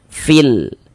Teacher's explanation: cara membaca huruf lamnya dibaca izhar, dibaca jelas, terbaca dia dengan jelas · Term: izhar qamariyah